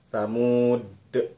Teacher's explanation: Tetapi kalau kita ingin berhenti di kata Thamuda tadi, maka dal yang di depannya ada alif itu kita jadikan sukun atau kita matikan dal itu sehingga sifat dal itu menjadi qalqalah. Ada bunyi memantul di huruf dal